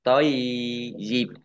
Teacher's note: Nah, ya sukun, yaknya dibaca double.